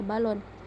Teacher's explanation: vokal o Tengah bawah belakang bundar